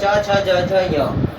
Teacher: इनका उच्चारण स्थान क्या हो जाएगा, तालु, इचुय साना तालु, तो इनका उच्चारण स्थान तालु हो जाएगा।